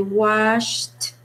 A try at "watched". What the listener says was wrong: You have to pronounce the T, otherwise it can confuse with wash, de lavar. Watched.